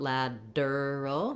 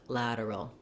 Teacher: the word lateral has a flap T for that T sound. So we, in American English, don't say lateral with a aspirated T.